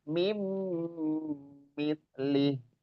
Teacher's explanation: kalau ditulisan min sukun ketemu dengan mim, dibacanya nunnya hilang masuk ke mim. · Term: idgham bi gunnah